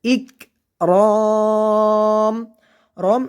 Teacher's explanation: যখন কাফে সাকিন হবে তখন আমরা হালকা কাফের বাতাস বের করে পড়ব, ইক রম। এখানে মধ্যের হরফের পরে ওয়াকফ হয়েছে, মধ্যে আরজি 3 আলিফ পরিমাণ টেনে পড়তে হবে।